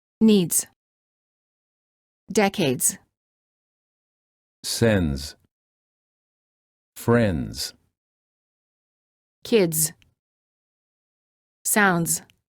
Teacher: Make sure that you pronounce both the d and the z sound in the following words. The s is pronounced like a z sound because it's followed by a d which is a voiced consonant. The d will need to be pronounced softly in order to ensure a smooth transition to the z.